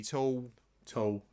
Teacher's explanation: yeah vocalic l sound at the end